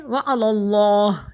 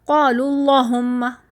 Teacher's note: اللہ کے نام کو ہم موٹا کر رہے ہیں